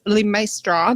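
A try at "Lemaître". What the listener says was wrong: So it's actually pronounced 𝐿emaître, so it's a silent S in my name, but people often just say 𝐿emaître, lepastry, whatever.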